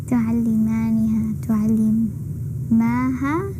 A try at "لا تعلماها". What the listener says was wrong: You don't say the la. لا تعلماها.